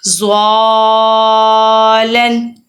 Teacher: اب زلن بھی پڑھ سکتے تھے پر ہم زلن نہیں پڑھیں گے کیونکہ سینٹر میں الف اور مدہ آ چکا ہے، ہم نے لمبا کرنا ہے۔